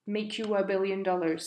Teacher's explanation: he adds a little link between you and I